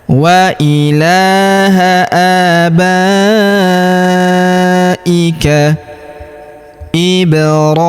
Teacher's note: Huruf ba kita panjangkan 4 atau 5 harokat karena di depan huruf ba terdapat alif yang di atasnya terdapat tanda garis bacaan panjang 4 atau 5 harokat yang ini ya.